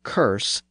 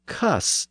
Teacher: the r sound was sometimes dropped when it appeared before an S sound and so a word like curse became cus in American English